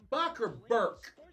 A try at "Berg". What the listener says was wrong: With a G.